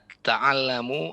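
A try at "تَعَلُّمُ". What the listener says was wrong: Ta'allumu, ya, jangan ta'allamu, ta'allumu.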